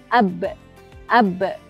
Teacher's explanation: Suara terputus ketika bertemunya dua bibir. Jadi makhraj untuk huruf ba adalah as-syafatain.